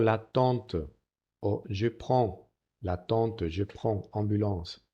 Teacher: Cuidado que no es una A palatal como que hacemos en español de Antonio, Alfonso, ¿no? Es una A velar A, que pronunciamos con la nariz evidentemente. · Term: vocal nasal A